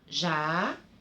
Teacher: eu dou mais enfoque, eu falo com mais força a sílaba ré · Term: sílaba tônica